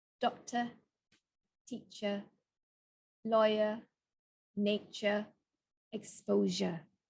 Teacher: in British English they've replaced the r with the schwa sound